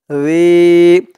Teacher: রালিয়াজের রি, রি একালিফ টান, জেরের পরে ইয়া সাকিন, রি। আর রি এখানে একদম পাতলা করতে হবে, নরম করতে হবে